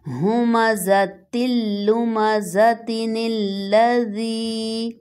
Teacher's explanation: اسی طرح next word میں اصل میں یہ لفظ تھا لُمَزَةٍ، اگر ہم سٹاپ ہوتے ہیں تو یہ گول تا ہا میں بدل جائے گی لُمَزَہ، اور اگر ہم اس کو جوائن کرتے ہیں تنوین میں جو نون ساکن کی آواز چھپی ہوئی ہے وہ نون ظاہر ہو کر سامنے آئے گا اور اس کو زیر کے ساتھ ہم نیکسٹ لا مشدد کے ساتھ ملائیں گے۔